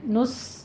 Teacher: آگے الذین میں دال کو نرمی سے پڑھنا ہے، آمنوا استعینوا، تینوں جگہوں پہ آپ دیکھیے، آ میں بھی فتحہ قائمہ ہے، قائم مقام الف مدہ 2 کاؤنٹ کرنے ہیں، اور پھر نس سین کی آواز میں سیٹی لے کر آنی ہے، ہمس پیدا ہوگا ساتھ میں